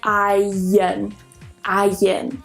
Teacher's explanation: What you'll hear is a kind of y sound in there. I know that in the transcription it doesn't have a y.